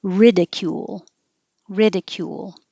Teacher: And the verb, the stress is on the first syllable